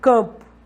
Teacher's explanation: Por exemplo, a palavra campo, o C tem som de K, o AM tem som de A nasalizado, como se fosse um A encimado por um tio. Aí vem o P, letra P, né, representando o fonema P, e esse O que tem som de U.